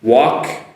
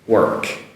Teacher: with the L, which is silent L, and the work with an R that is slightly pronounced